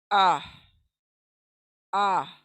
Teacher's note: ये अलिफ कहाँ से अदा होगा? हमारे लास्ट हलक के नीचे के हिस्से से।